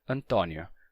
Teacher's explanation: fechado e se escreve com acento circunflexo Antônio mas em Portugal esse mesmo nome se escreve com acento agudo e se pronuncia Antonio com o aberto